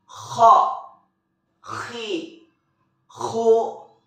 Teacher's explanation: ciri-ciri khasnya terdengar seperti suara yang sedang mendengkur · huruf-huruf ini dikeluarkan dari tenggorokan yang terdekat dari rongga mulut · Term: huruf kho